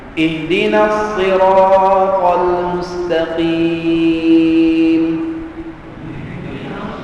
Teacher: mimnya berbaris di atas tidak ada raum tidak ada ismam ya hanya Ma sukun saja